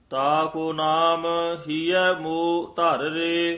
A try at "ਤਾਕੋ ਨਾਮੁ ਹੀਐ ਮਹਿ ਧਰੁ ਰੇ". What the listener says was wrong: ਜਿਹੜਾ ਹੀਐ ਮੋਹ ਪਾਠ ਹੈ ਨਾ, ਇਹ ਸੰਬੰਧਕ ਪਾਠ ਹੈ, ਲਮਕਾ ਕੇ ਬੋਲਣਾ ਹੈ।